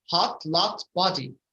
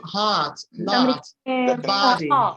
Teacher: The first is British, the second American. The British, they read the O like an O, hot, lot, body. The Americans do it like an A